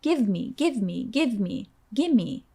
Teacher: Gimme is what we call an informal contraction of give me. If you say give me really fast, you can hear how it sounds like gimme.